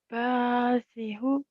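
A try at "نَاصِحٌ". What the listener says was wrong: Ba. Nah, bukan ba. Nah. Nasihun, bukan nasihun. Nasihun.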